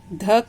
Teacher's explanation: ध का उच्चारण स्थान दंत और इसका उच्चारण नाम दंत्य